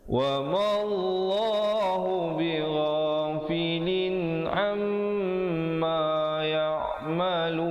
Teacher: Mim sabdu hukumnya wajibul ghunnah, wajib dengung 2 harakat di situ